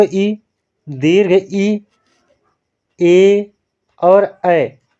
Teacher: ये आपके क्या होते हैं, जीभ के अगले हिस्से से बोले जाते हैं, इसलिए ये चारों आपके अग्र स्वर कहलाएंगे।